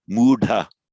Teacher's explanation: So muhta becomes mudha, with retroflexion of the d.